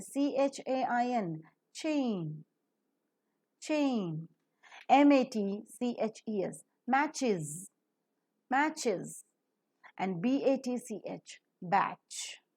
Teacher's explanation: The vocal cords are drawn wide apart to let the air pass without friction. So, the three-term label for ch is voiceless because vocal cords do not vibrate, Palato-alveolar because the hard palate and the alveolar ridge is involved in the production of the sound, and affricate because a complete closure is observed and a slow release with a slight friction is seen. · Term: voiceless, palato-alveolar, affricate